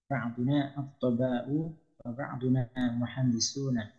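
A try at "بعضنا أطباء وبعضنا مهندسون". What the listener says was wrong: Sip.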